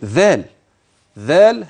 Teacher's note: خلي بالك انها ذال وليست زاي تاني فانف ذو ذال ذال هكذا باخراج طرف اللسان وليست زايا فانتبه لهذا حتى لا تتحول الى زاي